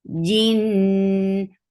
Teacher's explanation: This gunna is akmal, so keep the sound in your nose for a longer time.